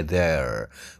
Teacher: Kalau di Amerika jelas R-nya ya, there.